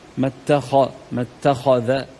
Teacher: التاء مرققه الخاء مفخمه في ثاني درجات التفخيم